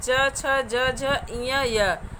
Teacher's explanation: इनके उच्चारण में जीवा और वायु तालु को स्पर्श करते हुए निकलती है। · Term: तालव्य व्यंजन